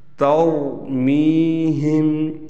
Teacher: یہاں میم کو ہم کھینچیں گے کیونکہ اس کے بعد حروف مدہ میں سے یا آ گئی اور یا ساکن ہے، یا ساکن سے پہلے میم کے نیچے زیر ہے۔